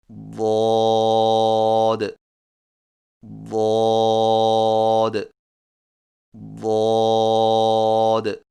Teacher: زبان کے پچھلے حصے کو تالو کی طرف بلند کرتے ہوئے زبان کے موٹے کنارے کو اوپر والی داڑھوں کی جڑ پر آہستہ آہستہ نرمی سے لگا کر خوب موٹی اور دراز آواز میں پڑھیں، یعنی ضاد ضاد ضاد۔